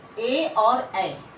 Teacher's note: फिर ए दैतो कंठ तालु, ए और ए, इनका उच्चारण स्थान क्या होगा, गला और तालु दोनों होंगे, कंठ और तालु दोनों होंगे